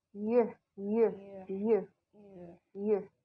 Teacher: lidah kalian bagian tengah itu menyentuh langit-langit keras